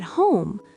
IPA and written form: hoʊm (home)